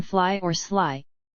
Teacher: a voiceless fricative and approximant, as in fly or sly